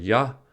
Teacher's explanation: For ya, the middle of the tongue is raised towards the roof of the mouth.